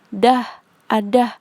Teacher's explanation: Lalu fonem D tempat artikulasinya di alveolar. Cara artikulasinya plosif atau letupan.